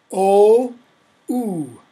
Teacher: the vowels kind of shift they move up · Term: great vowel shift